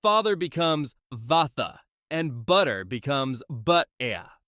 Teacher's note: That's what's called a non-rhotic accent. British English tends to drop the R sound unless it's followed by a vowel.